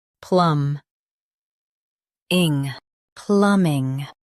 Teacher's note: Stress plum and keep ing soft. Plum. Ing.